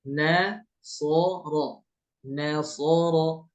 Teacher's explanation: nunnya tipis, sod sama ro-nya tebal. Ya. Atau huruf tipis yang diapit dua huruf tebal.